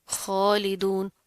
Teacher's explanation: खा मोटे हरूफ में से, इसको मोटा पढ़ेंगे